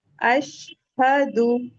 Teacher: हमें फील होता है एक एयर निकल रही है। क्यों? क्योंकि हमारे वोकल कॉर्ड्स ओपन है